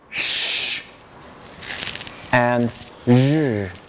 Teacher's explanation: The next two fricatives, gosh, there's a heck of a lot of fricatives, are produced by taking again the tip of the tongue and bringing it not up to the alveolar ridge, but pointing it right behind the alveolar ridge, right where the alveolar ridge curves up to make the hard palate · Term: post-alveolar